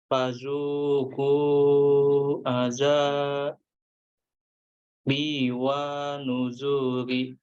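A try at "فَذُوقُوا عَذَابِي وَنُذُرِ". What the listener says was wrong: Ya, wa-nya pendek. Wa nuzuri. Ambil nafas dulu dari fazuku.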